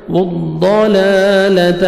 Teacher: ضاد کو آپ نے موٹا کر کے پڑھنا ہے